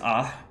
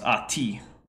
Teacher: normally in Arabic it's ah, but if you put like the first person singular possessive suffix, it becomes ati. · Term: feminine ending